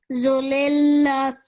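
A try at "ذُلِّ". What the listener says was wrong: Okay, the zal and the lam you have to join, so that's dhulli.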